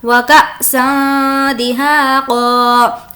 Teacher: وکأسا یہاں پر اخفا ہوگا, اس لیے تنوین کی آواز کو ہم ناک میں چھپائیں گے